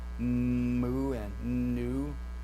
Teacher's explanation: we have that flow of breath that goes up in the nasal cavity and that's where we have the the pronunciation of the sound